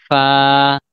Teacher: ফা, ফা বলার সময় উচ্চারণটা একটু আবার মনে করিয়ে দিচ্ছি, আমরা হরফ পড়ার সময় পড়েছিলাম। নিচের ঠোঁট উপরের দাঁতের সাথে লাগিয়ে ফা